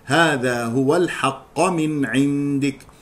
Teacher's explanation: يخطئ من يقرأ الحق بضم القاف يقول الحق والصواب فتحها